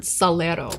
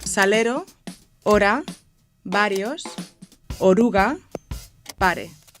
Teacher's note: This R is made with a flap of the tongue on the ridge behind the front teeth. That's not too far away from where the L is pronounced.